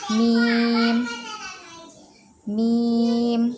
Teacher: মিম হারফর উচ্চারণে তিন আলিফ মাদ ব্যবহার করতে হবে